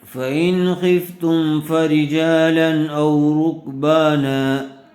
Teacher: تنوین کے بعد حروف حلقی میں سے حمزہ آیا ہوا ہے، اس لیے بغیر غننے کے جلد اظہار کر کے پڑھیں گے۔